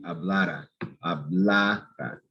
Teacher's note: the syllable before the R, that's going to be stressed.